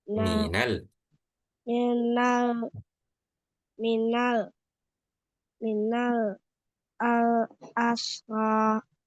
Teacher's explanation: Ditahnya agak lama ya. Didengungnya agak lama.